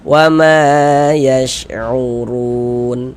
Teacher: Maka huruf yang memiliki tanda baca fathah dibaca panjang. Di sini kan huruf mim yang memiliki tanda baca fathah, maka dibaca panjang. Mad tabi'i panjang 2 harokat.